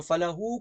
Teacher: ہا یہاں پر الٹا پیش ہے تو فله کو تھوڑا سا لمبا کرنا ہے